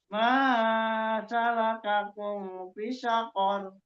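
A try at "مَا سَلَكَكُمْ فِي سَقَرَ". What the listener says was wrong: Fi-nya mat.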